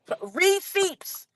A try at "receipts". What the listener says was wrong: just pronounced the P in receipts. Like, he pronounced that.